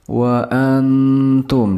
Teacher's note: Wa antum, di sini ada nun sukun bertemu dengan huruf ta. Ini merupakan bacaan ikhfa, jadi harus dibaca samar atau mendekati dengung.